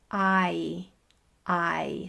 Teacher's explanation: The long I sound is a diphthong. The sound changes from the beginning of it to the end of it. If this little space right here contains the sound of I, then the beginning of the sound is, my mouth shape is going to be different to the end.